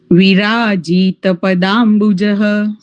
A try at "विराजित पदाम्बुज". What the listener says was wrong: જીત નથી. ઓકે ત્યાં ધ્યાન રાખજો. વિરાજિત. તમે લાંબો બોલો છો કે ટૂંકો બોલો છો? વિરાજિત.